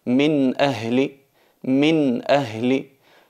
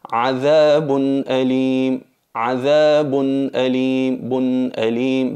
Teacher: Pronunciamos la nun sakina tanto cuando se trata de la letra o del tanwin, que es el mismo sonido, de una manera clara, haciendo notar la letra n, pero sin exagerar la gunna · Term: aclaración